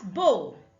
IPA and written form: bəʊ (Bow)